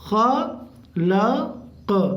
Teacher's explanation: قاف پہ قلقلہ ہوگا کیونکہ قاف آخر میں ساکن ہو جا رہا ہے